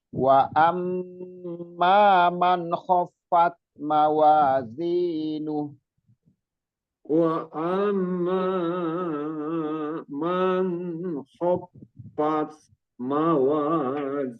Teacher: Ya, jadi di amnya gunnah musaddadah. Kalau ma-nya nggak usah terlalu panjang. Kalau terlalu panjang lah bukan mat tobi'i lagi dia.